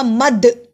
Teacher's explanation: دال پہ قلقلہ ہوا، دا جزم کی صورت میں ہے